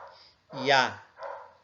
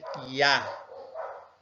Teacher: Por isso que aqui está, na língua portuguesa, a gente utiliza esse som, Iá, tá? Um A aberto, como se tivesse um acento agudo nele